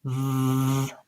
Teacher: your throat vibrates because your vocal folds are vibrating to create the voicing for the V sound